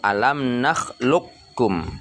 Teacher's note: Huruf qaf itu qaf bertanda sukun ketemu dia dengan huruf kaf pada contoh alam nakhluqukum, ya. Jadi huruf lam itu dia tasdid ke huruf kaf, sehingga huruf qaf dia tidak kedengaran di saat kita membacanya